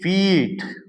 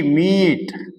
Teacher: double E ಬಂದಿತ್ತು ಅಂದ್ರೆ ಅದರ ಉಚ್ಚಾರಣೆ ಏನಾಗುತ್ತಪ್ಪ ಅಂದ್ರೆ ಈ ಅಂದ್ರೆ ಇ ಯನ್ನ ಲೆಂದಾಗಿ ಎಳಿತೀವಿ ದೀರ್ಘ ಸ್ವರ ಇ ದ ಉಚ್ಚಾರಣೆ ಇಲ್ಲಿ ಆಗ್ತದ